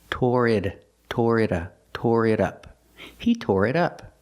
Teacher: We hear the T in it sound like a fast D.